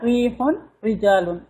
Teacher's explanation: را کے نیچے زیر آ گیا، ریحون رجالون باریک سمپل، یعنی ایمٹی ماؤتھ سے پڑھیں گے